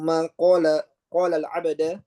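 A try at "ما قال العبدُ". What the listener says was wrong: Ma qala al-'abdu, salah itu baris.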